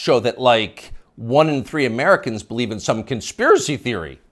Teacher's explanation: the upspeak, the rising inflection at the end of the sentence. That's a familiar tick in Brooklyn.